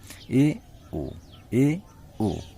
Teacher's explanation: मुख ना तो पूरा खुलता है ना तो पूरा बंद रहता है, बीच में रहता है, आधा बंद रहता है। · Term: अर्ध संवृत